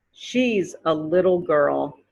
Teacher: the two t's in the middle of the word little turn into d's makes a d